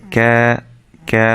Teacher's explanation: এই আ সাইনের বামে যদি খালি আলিফ থাকে, এটা হচ্ছে খালি আলিফ, তাহলে এটা এক আলিফ মাদ হবে, এক আলিফ টেনে পড়তে হবে